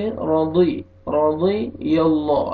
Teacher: दौद के नीचे ज़ेर है, दौद को मोटा करके